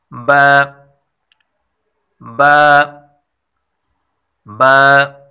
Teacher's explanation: ہونٹوں کا بھی وہ حصہ جو تر ہوتا ہے، یعنی ہونٹوں کا ایک حصہ خشک ہوتا ہے اور دوسرا تر حصہ ہوتا ہے یعنی گیلا ہوتا ہے۔ با کو تر والے حصے سے یعنی گیلے حصے سے ادا کیا جاتا ہے۔